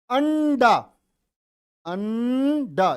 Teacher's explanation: ये न की आवाज किससे पहले आ रही है, डे से तुरंत पहले।